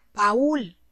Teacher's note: Baúl está formado por una vocal abierta y una vocal cerrada. Obviamente, la vocal cerrada está acentuada. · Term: hiato